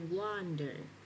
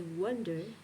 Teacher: And o becomes an uh sound.